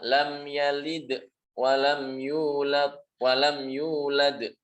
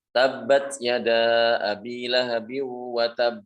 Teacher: Kalau huruf ta tidak, enggak ada qalqalahnya kalau huruf ta itu.